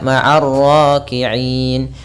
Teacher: Sementara itu, di sini ada sukun arid dalam kata 'na', di mana kita membuat na tidak terdengar karena kita berhenti, jadi kita membacanya maariin.